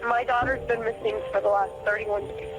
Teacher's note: what they're noticing is the lack of any intonation there's no emotional reflection in the the vocal cords obviously it's